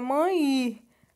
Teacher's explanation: a gente vai pronunciar o E com som de I